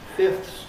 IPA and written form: fɪfθs (fifth)